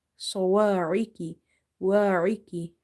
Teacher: Ain is from the middle of the throat, kaf is from the musta'aliya letters. Musta'aliya letters are your heavy letters, so you will make swad and kaf heavy.